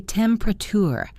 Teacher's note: We drop the middle syllable.